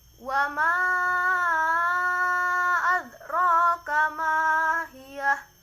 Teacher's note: mad jaiz munfasil, cara membacanya dipanjangkan 2 sampai 6 harokat